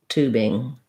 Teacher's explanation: for tubing, we have the oo vowel, first syllable stress, and then just our standard ing after the B.